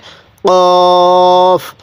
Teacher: এরপরে এই হরফটির নাম হলো কফ। কফ, কফটা উচ্চারণের সময় গলার মধ্যে হলকের মধ্যে হালকা ধাক্কা দিয়ে পড়ব, তাহলে কফ। কফের উপরে 2 নক্তা।